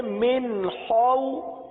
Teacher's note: خا حلق سے ادا ہوتا ہے، حلق کے اوپر والے حصے سے ادا ہوتا ہے. خا کو پورا ادا کریں گے کیونکہ یہ حروف مستعلیہ میں سے ہے، لہذا پڑھیں گے من خو. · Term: حرف خا